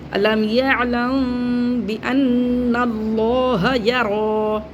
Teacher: میم ساکن کے بعد با آ رہا ہے تو یہاں پہ اخفاء شفیع ہوگا یعنی ہونٹوں میں ہم آواز کو رکھ کے پڑھیں گے